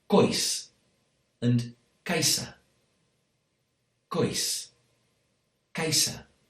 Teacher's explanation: So with a s sound instead of the sh sound we have everywhere else.